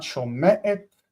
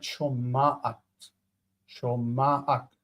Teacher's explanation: the ayin in the middle of the structure here will influence the sound in front of it and its own sound to become ah